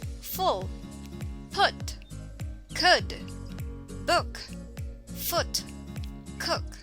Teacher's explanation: near closed near back rounded vowel as in put or book the short u sound is considered as a lax vowel · a near close, near back rounded vowel